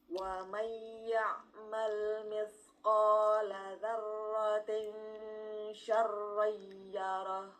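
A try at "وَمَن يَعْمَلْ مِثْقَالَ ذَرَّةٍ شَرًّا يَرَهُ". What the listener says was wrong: Wa mai, ya, tapi ini kan belum betul. Wa mai enggak perlu dihentak. Wa mai enggak perlu dihentak. Wa mai, bukan wa mai itu kan. Tapi wa mai ya'mal mithqala dzarratin syarran yarah.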